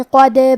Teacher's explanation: کلمت قد میں حرف الدال کو قلقلہ سے پڑھیں گے کیونکہ اس پہ جزم ہے